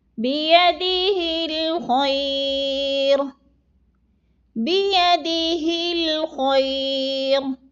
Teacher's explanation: را کو پر پڑھا جائے گا اور خا کو بھی پر پڑھا جائے گا